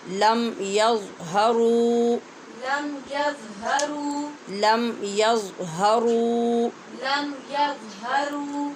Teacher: یہاں واو مدہ ہے، را کے پیش کی آواز کو لمبا کریں گے، لم اور میم پہ اظہار ہوگا